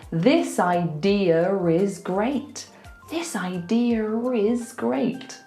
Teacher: I'm not moving my mouth, I'm just going So if a word ends in that, like this one, idea, we'll do the intrusive R to link it to a vowel. So we'll say, this idea is great.